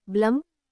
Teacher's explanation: So the vowel e does not sound like e or a, it becomes a soft a. That sound at the end, blum, is the schwa, schwa sound.